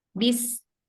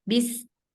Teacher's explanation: Jadi dia di belakang. Sebenarnya letaknya dia itu di antara gigi seri atas dan bawah, tapi dia lebih ke bawah. Bis. Jadi lebih banyak menyentuh ke bawah, ke gigi seri bagian belakang yang bawahnya. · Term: sin